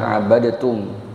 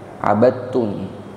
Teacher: Yang sejenis karena ta sama to itu satu makhraj, makanya bukan dibaca abadatum, abadtum. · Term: idgham mutajanisain